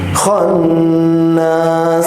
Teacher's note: kha-nya dia harus bergetar, keluarkan udaranya.